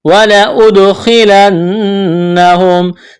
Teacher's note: دال یہاں پر ساکن ہے، دال کے اوپر جزم ہے تو قلقلہ کریں گے دال پر